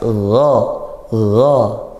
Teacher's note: ghain ini huruf tebal, pangkal lidah dinaikkan. Pangkal lidah dinaikkan dan makhrajnya dari tenggorokan atas. Dari tenggorokan atas gha, ngalir sedikit suaranya.